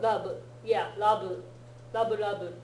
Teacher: It'll come out as bui, because they're trying to make it a V sound, but they can't quite make the V, so it comes out like bui.